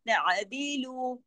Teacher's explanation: आइन को पढ़ना है गले में, जमाओं के साथ, तअदीलु।